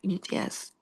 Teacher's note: Ujung lidah menyentuh pangkal gigi seri atas